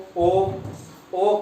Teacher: ओ की ध्वनि क्या है? कंठ ओष्ठ है, यानी कंठ और ओष्ठ है।